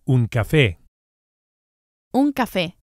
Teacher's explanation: we emphasize the e vowel on account of the accent, which indicates the stress, the strong syllable